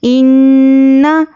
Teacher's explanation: ناک میں آواز کو روک کے غنہ اچھے سے کرنا ہے